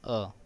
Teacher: अ जीभ के मध्य भाग से बोला जा रहा है, इसलिए इसे मध्य स्वर कहते हैं